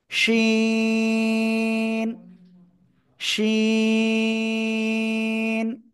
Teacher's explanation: জিহ্বার মধ্যখান তার বরাবর উপরে তালুর সাথে লাগিয়ে শাসা শব্দ করে আপনাকে এই অক্ষরটা উচ্চারণ করতে হবে